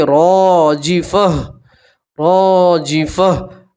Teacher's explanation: راجفہ، اور گول تا کے اوپر آپ جب بھی وقف کریں گے تو گول تا کو ہا سے بدلیں گے، گول ہا سے، اور اس کے اوپر جزم پڑھیں گے تو پڑھیں گے راجفہ، راجفہ۔ آخر میں صرف ہا کی آواز کو آپ مینشن کریں گے، صرف آخر میں ہا کی آواز کو پڑھیں گے